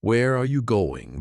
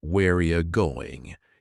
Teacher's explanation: Where are you going becomes whereya going. Here, you changes into ya, and again, are disappears. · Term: connected speech